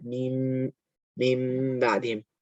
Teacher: Pronounced from the dry part of both lips. The meme is articulated by closing the 2 lips together.